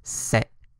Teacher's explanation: tone 7 can only be applied to syllables with a stop tone seven is a low stopped tone